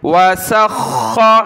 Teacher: خا کو ہم نے سخت کیا تشدید کی وجہ سے